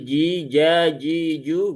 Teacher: Kemudian huruf jim, ya huruf jim ini tidak punya sifat hamas, maka jangan irji, tetapi irji, ji ya. Dia di tengah lidah langit-langit atas, bukan di ujung, tapi dia di tengah sini ya, tengah dalam.